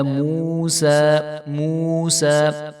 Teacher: واو ساکن سے پہلے پیش ہے تو یہ واو مدہ ہے، تو اس کو ہم ایک الف کے برابر لمبا کریں گے، اور سین کے اوپر کھڑا زبر ہے، اس کو ہم ایک الف کے برابر لمبا کریں گے۔